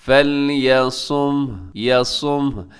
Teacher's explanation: ایسے بولیں گے کہ آخر میں ہا کی جو ساؤنڈ ہے وہ بھی محسوس ہونا چاہیے